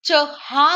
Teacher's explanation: च छ ज न श हे तालव्य आहे मात्र यांचा उच्चार य युक्त होतो